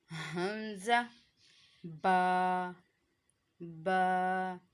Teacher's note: हमज़ा हलक के निचले वाले हिस्से से। · दोनों होंठों के तर हिस्से से अदा होता है। जब हमारे जो दोनों होंठ हैं इसके तर हिस्से एक दूसरे के साथ, गीले हिस्से एक दूसरे के साथ टच होते हैं तो वहाँ से बा की आवाज़ निकलेगी।